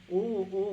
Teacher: ओ का उच्चारण स्थान ना कंठ और ओष्ठ है